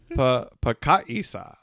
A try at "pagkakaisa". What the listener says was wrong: It's two ka. Kaka. Pagkakaisa.